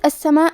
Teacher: کلمت السماء میں الف پہ مد کا علامہ ہے، یہ مد واجب متصل ہے تو ہم اپنی آواز 4 مد کے برابر لمبی کریں گے